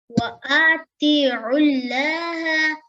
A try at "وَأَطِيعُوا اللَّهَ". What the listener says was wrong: وَأَطِيعُوا اللَّهَ. You will not do very long the Hamza, right? This is the Hamza and Alif. This is the Alif and we call it Hamza. So when Hamza at Fatha on it, so we will not say very long, okay?